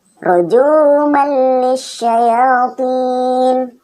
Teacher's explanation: nun sukun atau tanwin dibaca lebur, masuk ke huruf setelahnya tanpa didengung sedikit pun · fathatainnya tidak kentara atau sudah melebur ke huruf lam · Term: idgham bila gunnah